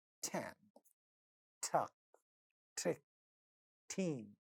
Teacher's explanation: because ta sound is at the initial position of a word, so it's going to be aspirated and this word is going to sound tan, tuck, trick, teen.